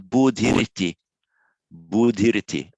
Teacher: Where the following word begins with a vowel or a voiced consonant, the h changes to a r. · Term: standard sandhi